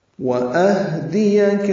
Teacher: واو ہونٹوں کی نا تمام گلائی سے، حمزہ اقصی حلق سے اور ہاں بھی اقصی حلق سے، حمزہ بالجہر ادا ہوتا ہے، ہاں پہ ہمس ہوگا.